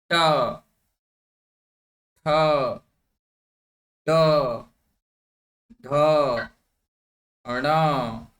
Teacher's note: कुत्र जिह्वा स्पर्शम करोति तत्रैव अस्ति मूर्धा। इत्युक्ते मूर्धायाः स्थानं यत्र जिह्वा स्पर्शं करोति घण्टीवत् यथा अत्र भवति यत्र स्पर्शः भवति टन् भवति खलु टन् न यथा दृष्टवन्तः घण्टी भवति अत्र ट ठ ड ध ण।